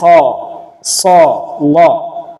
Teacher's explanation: ഉച്ചരിക്കുമ്പോൾ ശബ്ദഗതി അണ്ണാക്കിലേക്ക് ഉയരൽ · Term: ഇസ്തിഅലാ